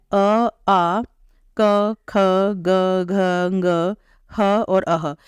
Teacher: ये जो वर्ण है ये कंठ की सहायता से बोले जाते हैं तो इसलिए इन्हे कंठ वर्णा कहा जाता है इन वर्णों का